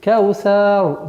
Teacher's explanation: И так получается «кау-сяу», «кау-сяу». «Ра» – твердый звук в данном случае, и она максимально твердая, потому что если буква «ра» с сукуном и впереди стоит огласовка «фатха», то она становится твердой.